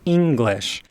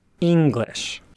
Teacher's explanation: start with a relatively high pitch and then drop again